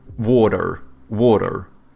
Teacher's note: You know how Americans, they have like soft T's and then they pronounce their R's